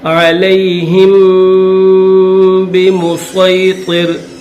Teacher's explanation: زیر ہی ہا کے بعد میم ہے ہا میم زیر ہم میم کے بعد اگر با آ جائے تو اس میم کو با کے ساتھ پلس کر دیا جائے گا اور یہاں پر غنہ بھی کریں گے